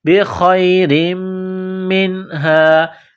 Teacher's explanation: 2 زیر تنوین ہے، را کو باریک کرنا ہے، بخیر منہا، نون ساکن کے بعد ہا ہے، حروف حلقی ہے تو نون ساکن پر غنہ نہیں کریں گے